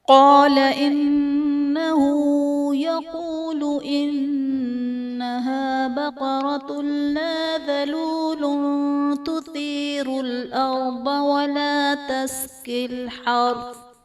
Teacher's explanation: قال میں الف سے پہلے زبر ہے، الف مدہ کا قاعدہ، اور قاف حرف مستعلیہ ہے، پر پڑھا جائے گا۔ انہو میں نون مشدد ہے، یہاں پر غنہ کریں گے۔ بقرۃ اللہ میں تا پر دو پیش کی تنوین، تنوین کے بعد حروف یرملون میں سے لام ہے تو یہاں پر ادغام بلا غنہ کا قاعدہ ہوگا، یعنی تنوین میں ہم غنہ نہیں کریں گے۔ · بقرۃ اللہ میں تا پر دو پیش کی تنوین، تنوین کے بعد حروف یرملون میں سے لام ہے تو یہاں پر ادغام بلا غنہ کا قاعدہ ہوگا، یعنی تنوین میں ہم غنہ نہیں کریں گے۔ ذلول تثیر میں لام پر دو پیش کی تنوین ہے، تنوین کے بعد حروف اخفا میں سے تا ہے تو یہاں پر اخفا کا قاعدہ ہوگا، یعنی تنوین میں ہم غنہ کر کے پڑھیں گے۔